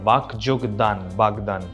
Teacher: প্রথম অঘোষ অল্পপ্রাণ ধ্বনিটা ঘোষ অল্পপ্রাণ রূপে উচ্চারিত হয় অর্থাৎ যেটা ছিল অঘোষ সেটা হয়ে গেল ঘোষ ক যোগ দ হয়ে গেল গ যোগ দ বাক যোগ দান